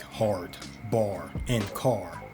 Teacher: British English was rhotic, meaning they pronounced the R in words like hard, bar, and car